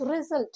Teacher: It's two-syllable word. The stress is on the second syllable, sult, S-U-L-T.